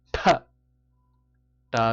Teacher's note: t t with a strong gush of breath